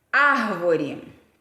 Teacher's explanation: Porque ela é proparoxítona, quer dizer que aquela antepenúltima sílaba é tônica.